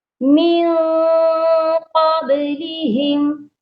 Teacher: نون ساکن پر اخفا ہوگا اور قاب ادھر با پر آپ نے قلقلہ لازمی کرنا ہے. ہم اس میم ساکن پر بھی غنہ نہیں ہوگا، یہاں پر بھی صرف اظہار شفوی ہوگا.